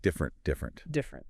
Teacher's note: different is a classic example of a word that gets simplified. First off, it's usually just 2 syllables, not 3.